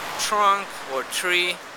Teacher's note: For example, like an aspirated T, like in the word time. And also, like a partly fricativized T, which is found, also aspirated, in the word trunk or tree